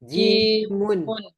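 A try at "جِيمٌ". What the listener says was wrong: Nah, hati-hati bukan jemun, jimun kasroh.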